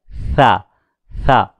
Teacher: जबान की नॉक को सामने वाले दांतों के सरे से हल्के अंदाज में बिल्कुल मुलायम तरीके से लगे और अंदर से आवाज निकले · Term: लब्ज था